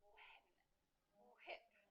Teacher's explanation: Sometimes some people will pronounce the W and the H when they say when, whip.